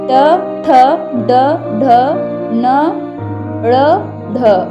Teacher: उच्चारण स्थान मूर्धा, वर्ण नाम मूर्धन्य है।